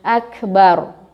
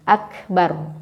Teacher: Kalau kita berhenti di situ maka ro-nya ditafhimkan, ditebalkan bunyinya.